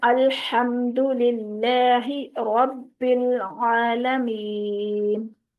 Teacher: अल्हम्द का हा जो है वो वस्ते हल्क से अदा होता है। इसको हम सीने की तरफ से अगर अदा कर देंगे अल्हम्दु, तो ये गलती हो गई, तीसरी बड़ी गलती।